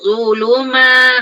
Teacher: Zuluma ada yang masih tak tebal lagi. Zu keluar lidah antara gigi atas dengan gigi bawah